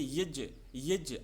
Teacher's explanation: अपन इसको बोलते हैं ज्ञ लेकिन इसका उच्चारण होता है दोस्तों ज है ना ज। तो ज और न्य के उच्चारण से बनता है।